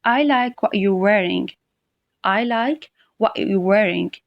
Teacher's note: I put stress at the beginning on the word I. So what I am saying is that I really like what you're wearing.